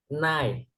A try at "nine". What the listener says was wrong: Not nine. Ending sound. Nine. Can you hear the n sound? Nine.